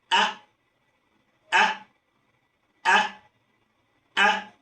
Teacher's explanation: Ketika kita ingin melafalkan huruf hamzah, maka suaranya tertahan. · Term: sifat syiddah